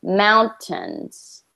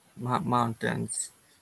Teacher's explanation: when you're reading you put the emphasis on the tens but we want to put the emphasis on the first syllable